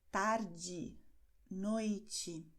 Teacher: a letra E, no fim da palavra, tem o som de I. Nós escrevemos E e nós pronunciamos I.